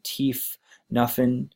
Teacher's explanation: F can be substituted for TH, so teeth, nothing can turn into teeth, nothing, and a consonant cluster reduction.